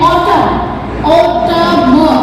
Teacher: Like A U T U M N, autumn, autumn, not N, न की sound नहीं आएगी पीछे